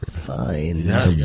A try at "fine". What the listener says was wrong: There's no Y in that word.